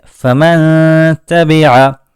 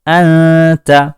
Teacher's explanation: اسی کے بالکل اپوزٹ، اس کے بالکل الٹا، اخفا کی مثال جیسے فمن تبع، فمن تبع میں سب سے پہلا لفظ فا تھا، اس کے بعد میم، اس کے بعد نون، یہاں نون ساکن ہے، لیکن نون ساکن کی آواز کو ظاہر نہیں کیا گیا ہے، بلکہ نون ساکن کی آواز کو ناک میں لے جا کر چھپا دیا گیا ہے